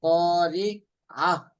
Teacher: যদি বলি কারিয়া তাহলে ইয়া উচ্চারণ হয়ে গেল, কিন্তু ইয়া হবে না, এখানে হবে আইন, কারিয়া। قارعة কারি পাতলা হবে।